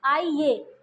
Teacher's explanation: लिखते हैं आइए आइए तो ये की आवाज आ रही है इसमें य की आवाज आ रही है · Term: अर्ध स्वर